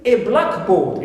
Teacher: But if I have the phrase a blackboard, it means any board which is black, clear, a blackboard. Here I have a noun phrase which is not a compound noun, so here I stress the second word, which is board.